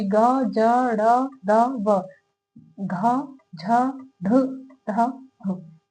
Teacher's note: इन सब में बोलते टाइम कंपन गले में महसूस होती है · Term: घोष वर्ण